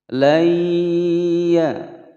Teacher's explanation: ada nun sukun bertemu dengan huruf ya. Hukum bacaan idgham bi gunnah, dimasukkan dan didengungkan selama dua ketukan